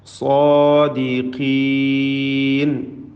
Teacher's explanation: സാദിഖീൻ, സ്വാദിനും അതിൻ്റെ ദീർഘാക്ഷരമായ അലിഫിനും തഫ്ഖീം കൊടുക്കണം. ഖാഫിന് കസ്റാണ്, കുറഞ്ഞ തഫ്ഖീം മാത്രം നൽകി ഉച്ചരിക്കുക.